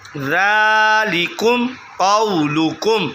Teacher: یہ دیکھیں کم جو ذالکم کی میم ہے، میم ساکن ہے، اس کے بعد قاف آ گیا تو با اور میم کے علاوہ لفظ آ گیا، تو یہ اظہار شفوی کا قاعدہ ہے، غنہ نہیں کیا جائے گا۔